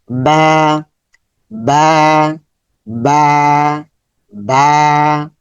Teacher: বা এর মাখারাজ হচ্ছে ঠোঁটের ভেতরের অংশ যুক্ত করে। ঠোটের দুটি অংশ।